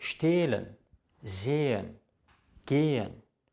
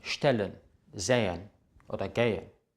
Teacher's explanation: Das H macht den Vokal lang, nachdem es steht.